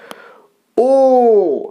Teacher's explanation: স্বাভাবিকভাবে যেমন থাকে তার থেকে ও ছোট হয়ে আসছে, কুঞ্চিত হচ্ছে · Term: কুঞ্চিত স্বরধ্বনি